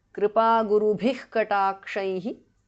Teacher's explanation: Bhas Mahapranah. Visarga changes to Jihva Mulya